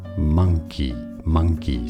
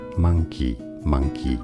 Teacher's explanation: it's an A sound, a schwa sound, not an O sound